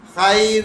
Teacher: اب خی لین ہے، یا ساکن سے پہلے زبر آ گیا، خا موٹا کر کے پڑھنا ہے